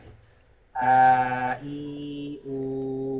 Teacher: Hamzah tempat keluarnya adalah dari pangkal tenggorokan. Ya, pangkal tenggorokan ya di pita suara ya. Kemudian dia mempunyai sifat jahor.